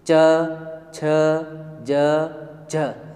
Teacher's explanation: दांतों से जस्ट ऊपर जाएगी। च छ ज झ, अब जीभ कहाँ पे टकरा रही है? आपके दांत से बिल्कुल ऊपर, जिसको तालु भाग कहते हैं।